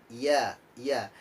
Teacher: makhrojul huruf ya yakni di tengah lidah dibawah langit-langit